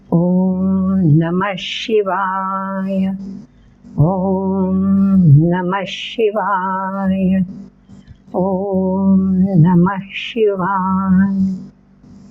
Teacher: म च्या पुढे विसर्ग आहे पण त्या विसर्गाचा श्वास सोडला जातो त्यामुळे ते अक्षर म्हणून धरलं जात नाही तर ही पाच जी